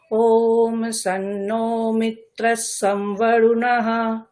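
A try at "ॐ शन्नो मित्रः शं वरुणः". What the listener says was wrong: শন হয়ে যাচ্ছে, হ্যাঁ? তালব্য স স্পর্শ স। ওম শন্নো মিত্রশং বরুণঃ। কৃষ্ণ যজুর্বেদে ম্যাক্সিমাম সময় আপনার গলাটা উদাত্তের দিকে থাকবে, মানে উপরের দিকে গলা থাকবে সবসময়, হ্যাঁ?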